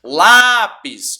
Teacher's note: Lápis, ó, não é o pis, é o lá.